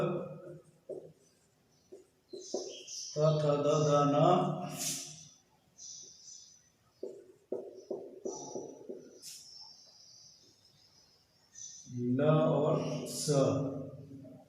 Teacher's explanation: तो ये दंत से उच्चारित होने वाले वर्ण है और इन वर्णों को मूल रूप से कहा जाता है दंतव्य वर्ण।